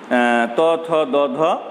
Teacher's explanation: ওপরের পাটির দন্তমূল এবং দাঁতের সঙ্গে জিভের স্পর্শে বেশ কিছু ধ্বনি উৎপাদিত হয়, এদেরকে দন্তধ্বনি বলে।